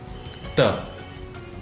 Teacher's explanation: the tip of the tongue hits against the back of the teeth.